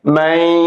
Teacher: এখানে নুন সাকিনের পরে ইয়া আসছে, ইদগামে বাগুন্না হরফ, বাগুন্না হরফের তাসদীদ দিয়া গুন্নার সহিত মিলাইয়া পড়িতে হবে।